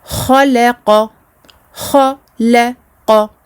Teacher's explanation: Attention à bien faire le tafrim du kha et surtout celui du qaf.